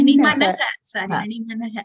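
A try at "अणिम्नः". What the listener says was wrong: Not Animanaha. Akara Lopaha Bhavati. Nakara is there. Animnaha.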